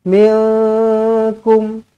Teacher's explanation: Nun kosong bertemu dengan kaf, ikhfa hakiki, dengungkan dua harakat.